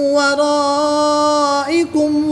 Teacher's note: الف مدہ کے بعد حمزہ اسی کلمے میں ہے تو یہاں پر بھی مد متصل ہوگی، 3 سے 5 الف تک کھینچ کر پڑھیں گے